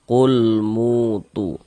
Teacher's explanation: Mu dibaca panjang, tu dibaca panjang. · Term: mad tabi'i